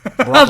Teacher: You have to say his name as like one syllable.